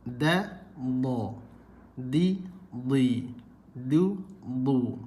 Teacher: Dal hujung lidah, dad sisi lidah. Okey. Dal tipis, dad tebal.